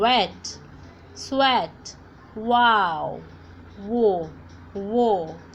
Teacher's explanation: इसकी साउंड भी आप देखो व ही होती है, लेकिन इसको बोलते कैसे हम? व बोलते टाइम पे हमारे जो मुंह होता है, जो लिप्स होते हैं, वो ऐसे गोल हो जाएंगे.